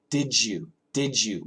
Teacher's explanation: We make the D and the Y, we make it a J. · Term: blending